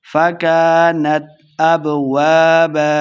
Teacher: کاف کو موٹا بھی نہیں کریں گے